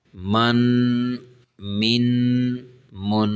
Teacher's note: تھوڑا سا غنہ بھی کریں گے نا، ساتھ ساتھ نا آواز کو ناک میں سے لے جائیں گے